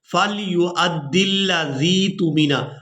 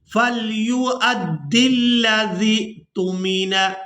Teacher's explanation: پر ہم نے زال کو کھینچ کر ادا نہیں کرنا بلکہ زال کو حمزہ ساکن کے ساتھ ملائیں گے تو جھٹکے کے ساتھ ادا کریں گے